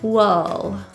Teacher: Wool is pronounced with an upsilon. That means an open, slightly open jaw and protruded lips.